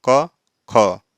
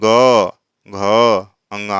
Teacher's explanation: जैसे आप बोलेंगे क ख, तो यहाँ पे आपके गले में कोई कंपन नहीं होने वाला है। लेकिन जैसे ही आप बोलते हैं ग घ अंगा, आप देखिए एक भनभनाहट कंपन उत्पन्न होता है।